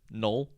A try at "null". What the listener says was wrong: Null. Null. You're saying it like gnome, but you're going null.